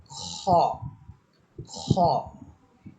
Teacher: খ হরফটাকে আমাদের কণ্ঠনালীর শেষ ভাগ থেকে একটু মোটা আওয়াজে একালিপ টেনিয়ে উচ্চারণ করতে হবে।